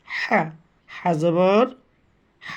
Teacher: হা কোথায় থেকে উচ্চারণ হয় মনে আছে? কণ্ঠনালীর মাঝখান থেকে।